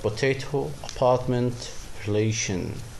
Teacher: In potato, relation, you can find the stress placement in the middle.